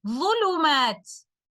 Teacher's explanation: upon stopping with ishmam, I will recite letter ta with a temporary sukoon